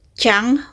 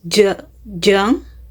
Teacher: Both consonants are palate alveolar affricates, meaning they are made with placing the tongue blade close to the hard palate, but J uses the vocal cord.